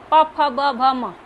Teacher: प फ ब भ म ये आपका ओट से चिपक रहा है · प फ ब भ म, ये आपका ओठ से चिपक रहा है, उ ओठ एकदम गोल हो गया, ओठ उ बोलने में, तो क्या हो गया आपका ओष्ठ हो गया, ठीक है।